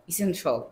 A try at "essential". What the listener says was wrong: English আসলে shell বলতে কোনো কিছু নাই, আমাদের বলতে হবে shall. Listen to me. Essential. Essential.